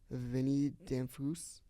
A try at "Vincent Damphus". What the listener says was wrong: I don't think the S is silent. Yeah, I think the S is silent.